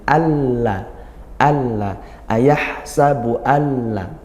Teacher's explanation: Nah inilah yang dinamakan idgham, yaitu langsung masuk kepada huruf lam, tidak membaca huruf nunnya